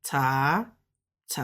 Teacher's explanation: T is like flat that's the first tone